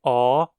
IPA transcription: ɔː